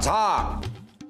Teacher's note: झाडून नाही हो, झावर जोर द्यायचा.